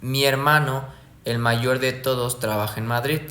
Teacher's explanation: primero sube, se mantiene, se mantiene y luego baja.